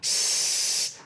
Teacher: have tonal quality for instance if you make the S sound if you listen to the sound s it's actually White Noise